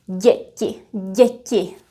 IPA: ɟ